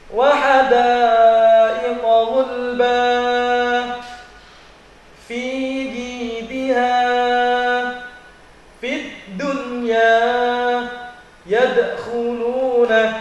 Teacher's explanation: huruf dal itu ujung lidah menyentuh kepada dua buah gigi yang atas ini di bagian tengahnya.